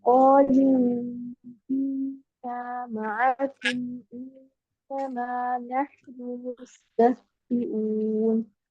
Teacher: انما جتنے بھی نون مشدد آ رہے ہیں ان میں 2 کاؤنٹس غنہ مکمل کریے